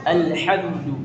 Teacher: Jadi lam di lidah kita diletakkan di gigi seri atas kita.